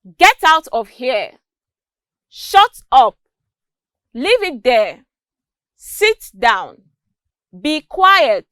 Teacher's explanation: notice that there was a drop in the pitch of my voice at the end of each of these sentences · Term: falling intonation